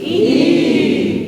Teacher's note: it's not in the lips, it's not E with a smile, it's in the height of the tongue, right? The tongue is at its highest. Put 2 fingers in your mouth like that and go E.